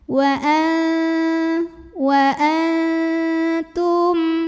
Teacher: Maka nun sukun dibunyikan samar-samar menuju ta disertai dengungan. Dengungnya sedikit ya.